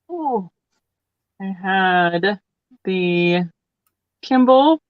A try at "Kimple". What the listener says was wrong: P. You have to say it with a P. It's a Kimple.